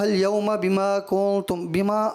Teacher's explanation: بما الف مدہ جو ہے نا یہ ایک ہی الف کے برابر اس کو کھینچا جائے گا نا